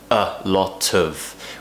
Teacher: section a lot of we're connecting lot and of lot of of is not being pronounced as off as it's true form it's being relaxed it's what we call a weak form because the word of is not very important in this sentence